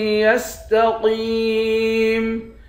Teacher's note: حمزے کو یا کے ساتھ ملا کر پڑھیں گے، نون کے ساتھ ملا کر نہیں پڑھیں گے۔ قوف کو موٹا پڑھیں گے، قوف کو یا کے ساتھ ملا کر ایک الف کے مقدار کھینچیں گے، آخر میں میم ساکن ہے۔